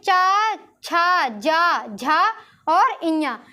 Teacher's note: जो अपनी जीभ है वो तालु स्पर्श कर रही है